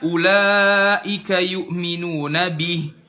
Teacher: kasrohnya jelas i, bukan dimiringkan jadi e.